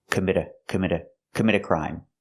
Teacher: We hear the T in commit as a fast D. Commit a crime, because the T is between vowels when you link the words.